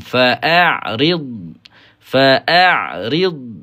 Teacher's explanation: Jadi ain ni ain makhraj halqi.